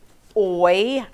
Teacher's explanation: there's another diphthong o y it says oy i start out little and get big